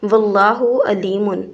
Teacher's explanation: عین کو حمزہ سے ملا دیتے ہیں تو پھر علیم کا مطلب دردناک بن جاتا ہے۔